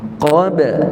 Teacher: qaf tebal, ba qalqalah. Cuma qalqalah yang nipis.